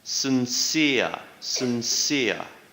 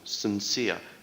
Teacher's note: stress is on the 2nd syllable